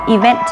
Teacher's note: Trọng âm của từ event lại rơi vào vent.